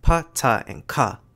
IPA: pʰ tʰ~tˢ, kʰ